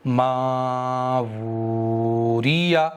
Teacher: वाव का मखरज ये है कि दोनों होठों के किनारे को इस तरह से मिला दो, इस तरह से, और ये बीच को खुला रखो, यानी पूरे का पूरा जोर होंठों पर दो। वाव को अदा करते वक्त हलक पर जोर नहीं आना चाहिए, होंठों पर आना चाहिए।